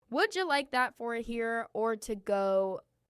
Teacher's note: Notice how would you becomes would ya and how the R in for here is strong.